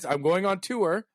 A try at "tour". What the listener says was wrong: There's no W in there. There's no W in that word.